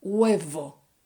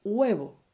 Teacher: la letra B y la letra V, letter B and letter V, are pronounced the same way, like a B.